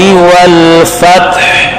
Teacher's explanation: فتح کے بعد تا کے بعد ہا کی آواز درمیان حلق سے نکلے